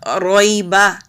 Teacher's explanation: را کے اوپر زبر ہے تو را کو موٹا پڑھیں گے، را کو یا کے ساتھ ملائیں گے، رویبا۔